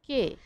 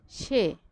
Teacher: সেই পদগুলার এ ধ্বনি স্বাভাবিকভাবেই উচ্চারিত হবে, অর্থাৎ এর মতোই উচ্চারিত হবে, অর্থাৎ সংবৃত উচ্চারণ হবে।